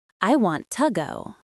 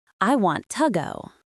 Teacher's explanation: Make the word to very small and weak. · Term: ghost version of to